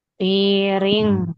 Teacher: ketika kita mengucapkan piring, maka suara dengungnya itu sempurna ada di hidung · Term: ikhfa